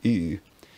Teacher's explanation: a vowel pronounced with rounded lips like ooh